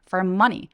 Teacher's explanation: money 길지 않고요 뾰족하게 빠르고 단모음으로 소리내서